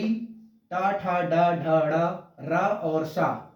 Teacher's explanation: उच्चारण स्थान है मूर्धा, वर्ग है मूर्धन्य